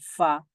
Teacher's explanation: ঠোঁট থেকে উচ্চারিত হয় যেমন ফা ঠোঁট ব্যবহার করতে হয় এখানে ফা উচ্চারণ করার সময় দাঁতও লাগে ঠোঁটও লাগে